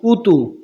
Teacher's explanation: دونوں پہ ہوٹ گول ہوں گے کیونکہ پیش آ رہا ہے